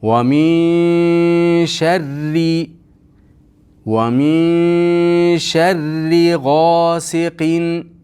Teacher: Sharri ro ingichka bo'ladi. Sharri bo'lib yo'g'on bo'lib qolmaydi.